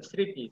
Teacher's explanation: শব্দের আদিতে ম ফলা যুক্ত হলে সে ম ফলা অনু উচ্চারিত মানে উচ্চারণ হবে না · সেই ম ফলা উচ্চারণ হবে না